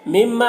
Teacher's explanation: مما، میم مشدد غنہ ہوگا اور الف مدہ ہے، ایک الف کے برابر کھینچیں گے۔